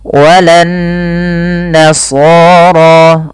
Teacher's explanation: Karena dia nun yang berharakat tasydid. Cara membacanya adalah ditahan suara nunnya sepanjang 2 harakat. Jadi tidak langsung dibaca walan nasara, tapi ada tahanan dulu sepanjang 2 harakat. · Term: gunnah